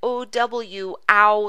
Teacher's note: a diphthong in town we have the o w ow sound